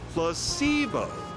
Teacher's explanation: The stress is on the middle syllable.